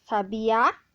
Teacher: Em sabiá, o acento agudo, ele diferencia, deixa tônica a última sílaba